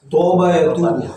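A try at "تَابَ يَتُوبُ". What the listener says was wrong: Kalau toba itu bukan toba. Itu pakai huruf ta ya.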